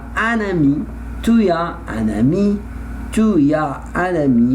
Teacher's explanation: I must pronounce the letter N because I have vowel